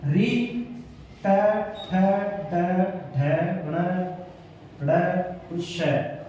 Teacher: दांतों के पीछे का भाग, तालव के आगे का भाग, दोनों के बीच का जो कठोर भाग होता है उसको मूर्धन्य कहा जाता है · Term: मूर्धन्य वर्ण